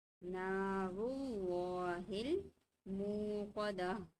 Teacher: اللہ کا لام پر پڑھا جائے گا